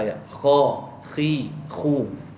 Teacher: terlalu kuat kesan dia akan Menghilangkan sifat yang ada pada dia apakah sifat yang ada pada huruf Kha antaranya adalah sifat angin ataupun yang dipanggil sebagai hams mahmus dia keluar angin kemudian dia ada sifat sifat yang dipanggil sebagai rakhawah lah